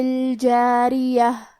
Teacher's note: را کے نیچے زیر ہے تو ہمیں را کو پتلی آواز میں پڑھنا ہے، آخری میں تائے مدورہ پہ رکیں گے تو اس پہ ہاں سے رکیں گے۔